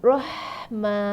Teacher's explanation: ha pedas tu ada sifat hamas dengan rakhawah. Kalau rakhawah, kita mesti kena lepaskan betul-betul suara tu.